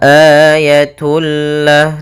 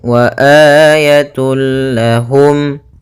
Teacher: masukkan tanwinnya kepada huruf lam tanpa ditahan gunah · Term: Idgham bila ghunah